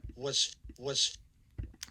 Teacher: this is a voiceless fricative even though you'd normally expect that to be voiced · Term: voiceless z